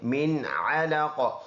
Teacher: من آواز ناک میں نہیں لے کے جائیں گے، علقن ہے، اسٹاپ کریں گے، دونوں زیر سائلنٹ، اور اس میں قلقلہ کریں گے، علق۔